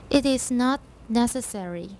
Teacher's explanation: It is not necessary to explode the T, but you need to stop